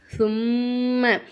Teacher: மீமுக்கு மேல சத்து இருக்கிறதால நம்ம என்ன செய்யணும் மீமை நல்லா அழுத்தி உச்சரிக்கணும்